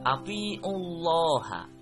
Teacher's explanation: hukum bacaannya adalah tafkhim atau tebal, dengan alasan lafaz jalalah didahului tanda baca dhammah